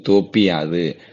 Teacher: யகரம் வருது அப்படின்னா அது வந்து என்னது தனக்கு இந்த கடைசியில் உள்ள உகரமானது இகரமாக மாறும் அப்படி மாறும் பொழுது தனக்குரிய ஒரு மாத்திரை அளவிலிருந்து அரை மாத்திரை அளவாக குறைந்து ஒலிக்கும் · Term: குற்றியல் இகரம்